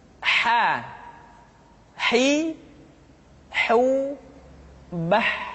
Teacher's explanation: huruf ha dikeluarkan dari tengah-tengah tenggorokan tengah-tengah tenggorokan ha hi hu Bah kesalahan yang paling sering ketika